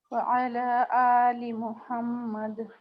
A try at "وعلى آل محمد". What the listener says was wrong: ہاں اور لی کو لام زیر لی کتنا لمبا ہوتا ہے اس کو اتنا ہی لمبا کریں. ٹھیک ہے اس کو آپ نے لی کہنا، اس کو شارٹ نہیں کرنا. لی محمد لی شارٹ نہیں، لی پورا لام زے لی لام زے لی.